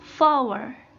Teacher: Ini mempunyai syllables yang ditekankan pada awal kata. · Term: falling meter